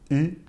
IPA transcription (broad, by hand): ɨ